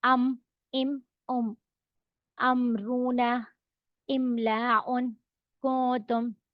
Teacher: दोनों होठों को मिलाए तो मीम अदा होता है